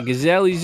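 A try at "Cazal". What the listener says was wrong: saying it wrong. People been pronouncing it like the fucking animal in Africa wrong for years. It's Kazal.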